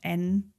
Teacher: not touching your teeth but slightly further back on your teeth the tip is there and then you pull the rest up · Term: end spot